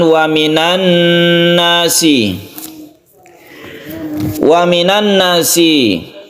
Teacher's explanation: cara membacanya sama dengan gunna musyaddadah, yaitu membacanya itu gunna atau didengungkan. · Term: idgham syamsiyah